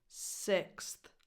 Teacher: And remember that the vowel is a lax I. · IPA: [ɪ]